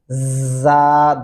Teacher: یہ بات اور ایک ذہن میں رکھنی ہے کہ اس کو سختی سے پڑھا جاتا ہے زا، اس کو زال کی جگہ سے نہیں پڑھیں گے، زا نہیں ہوگا، زا، دانتوں کو بند کر کے سیٹی کی آواز محسوس ہوگی